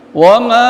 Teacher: ma di sini majjais munfasil, panjangkan lebih daripada mad asli